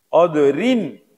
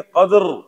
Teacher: قدرن باریک پڑھیں گے. وقف کریں گے قدر موٹا پڑھیں گے